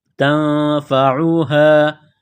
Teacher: یہ گول ہا ہے چشمہ والی، صرف منہ سے ہوا نکالنے کی طرح اس کو پڑھیں گے